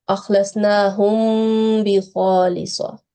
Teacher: we should pronounce it like prolonging it for 2 seconds. Okay, concealing the noon. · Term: labial concealment